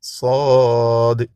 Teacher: मुंह भर के मुफखम पढ़ेंगे